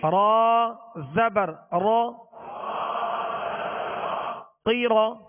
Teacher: 2 نقطے والا قاف ہے اور یہ حروف مستعلیہ میں سے، را کو پر پڑھیں گے، را پر زبر ہے اس لیے